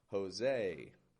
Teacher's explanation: And also that S, I'm voicing that. I am giving the S this American sort of, Americanizing the name just a little bit with the S.